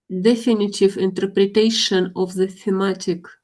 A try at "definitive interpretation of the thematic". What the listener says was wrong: Yeah, that's perfect.